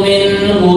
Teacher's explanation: idhar atau jelas suara non yang berharokat sukun